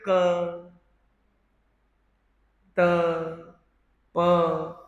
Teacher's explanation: प्राण का मतलब होता है ऊर्जा। तो अल्प ऊर्जा से बोलने वाले अक्षर है क, त, प। इनको बोलने में कम ऊर्जा लगती है। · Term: अल्प प्राण